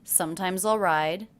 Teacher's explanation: I notice the ending S here is pronounced as a Z.